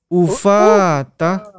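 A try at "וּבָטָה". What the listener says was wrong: Berat lagi, bukan ufa. Uvata. Berat dia. Bukan F. Bukan F tapi V. Uvata.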